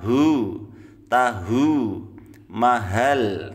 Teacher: hu-nya harus ditekan, kita keluarkan dari pangkal tenggorokan